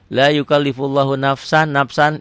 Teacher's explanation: lafaz Allahnya dibaca tebal tafkhim. Kenapa? Karena sebelum lafaz Allah baris di atas domah.